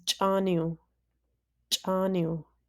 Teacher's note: this is a glottalized W, and just like the glottalized M, these come at the end of the word or the syllable